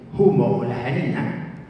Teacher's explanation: esa pronunciación aspirada que tenía el humo o la harina, ese primer paso de la F latina al cero, que era una aspiración